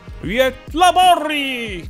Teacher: in front of an Ö, G is usually softened into a Y sound